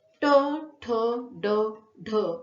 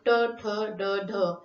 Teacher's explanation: खरं तर या ठिकाणी उत्तर आहे मूर्धन्य. तोंडाच्या मधल्या कठीण टाळूला म्हणजे मुर्देला ज्यावेळेस जिभेचा स्पर्श होतो तेव्हा जे उच्चारण निर्माण होतं त्याला मूर्धन्य उच्चारण असं म्हणतात.